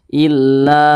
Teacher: maka lam ini dibaca panjang namanya Mad Thobi'i illa yadunnun panjangnya dua harakat atau kira-kira dua katukan illa seperti